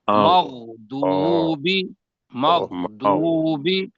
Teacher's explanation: غو اور خو یہ موٹے بھی ہیں، موٹے بھی کرنا ہے اس کو اور حلق سے بھی نکالنا ہے